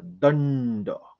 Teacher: तो अनुस्वार जो आहे तिथे आपण बाणाचा न वापरतोय